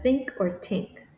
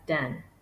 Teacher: think is pronounced as sink or tink then may be pronounced as den